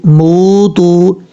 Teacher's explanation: اب اس کے بعد میم واو پیش مو، تا واو پیش تو، موتو، یہاں پر دونوں واو مدہ ہیں، ایک ایک الف کی مقدار اس کو لمبا کر کے پڑھیں گے، میم کے بعد جو واو ہے اور تا کے بعد جو واو ہے دونوں کو لمبا کر کے پڑھیں گے، لیکن آگے جو الف ہے اس الف کو پڑھنے کی ضرورت نہیں ہے۔